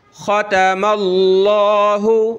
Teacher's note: ख़ा को मोटा किया, ता छोटी। ख़तमल्लाहु, लफ्ज़ अल्लाह से पहले ज़बर आ जाए तो लफ्ज़ अल्लाह को मोटा करते हैं।